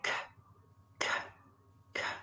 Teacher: So the sound k is unvoiced. There's no vibration.